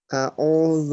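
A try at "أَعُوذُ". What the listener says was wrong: আইন আপনার উচ্চারণ হচ্ছে না। বলেন আউ, আউ, আইউ। এই আইনের উপর মেহনত করতে হবে আপনাকে, ঠিক আছে? হ্যাঁ, একেবারে কন্ট্রোলের মধ্যখান হইতে আওয়াজকে চাপ দিয়ে বলতে হবে। আইউ, এরকম করে। এটার উপর আপনি মেহনত করবেন, তারপর যান।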